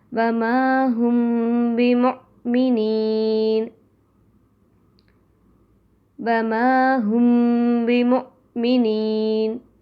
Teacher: میم ساکن کے بعد با آئے تو غنہ کے ساتھ اخفا ہوگا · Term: اخفا شفوی